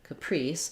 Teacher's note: in the word Caprice we have second syllable stress